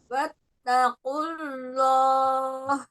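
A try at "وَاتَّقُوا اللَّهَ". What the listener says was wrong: Tidak watakul, wattaqullah. Tebalkan lagi lamnya. Jangan seperti kayak apa ya, kayak kepisah gitu ya. Jangan terlalu ditekan, dilepaskan aja suaranya.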